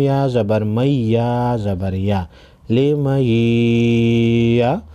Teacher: नून साकिन के बाद हुरूफ़ यरमलून में से या है गुन्ना के साथ इदगाम होगा।